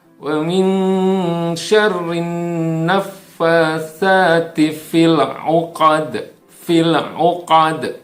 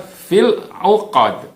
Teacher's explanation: tidak ada pantulan di dalam huruf lam yang bertanda sukun